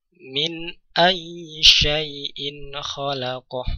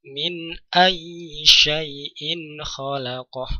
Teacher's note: Nun sukun bertemu dengan hamzah. Izhar, suara nun sukun dibaca dengan jelas.